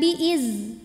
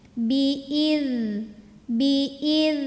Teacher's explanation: ujung lidah bertemu dengan ujung dua gigi seri atas jadi lidah melet dikit sentuhin dengan ujung dua gigi seri atas bunyinya ngalir berisik jadi tidak mantul ID tapi id gesekin biid biidnillah alif lam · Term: dalal